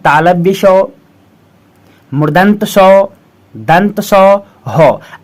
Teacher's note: जिन व्यंजन वर्णों के उच्चारण में हवा मुंह के अंदर से रगड़ खाते हुए बाहर निकलती है उसे ऊष्म व्यंजन वर्ण कहते हैं